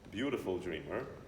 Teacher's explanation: American tends to go to like a D, beautiful dreamer.